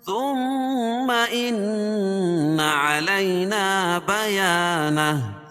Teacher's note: ثم میم مشدد، ان نون مشدد، دونوں جگہ غنہ ہوگا